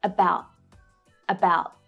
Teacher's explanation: So I don't fully release the air after that T to make a complete T sound. · With that T at the end, you'll hear a stop T.